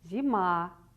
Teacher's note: Ударение падает на второй слог, то есть на звук А.